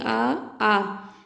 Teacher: इनको बोलते वक्त हम गले पे हाथ रखेंगे तो हमारे कंठ पे गूंज होती है। बोल के देखेंगे आ। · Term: कंठ स्वर